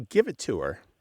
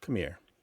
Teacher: in English, especially American English, we don't always pronounce the H when it's at the beginning of a word